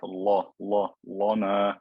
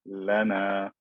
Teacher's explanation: The lam at the beginning as well as the lam in the middle, they're going to be thin and skinny.